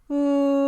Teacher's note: the oo sound is when you bring the back of your tongue up as high as it will go before it blocks